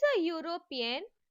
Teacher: even though the word European starts with the vowel letter, it produces the sound yo. So we have to use a before them.